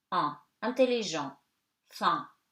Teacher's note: EN before a consonant and at the end of the word, you know that N, you kind of eat it at the end and before a consonant, it becomes nasal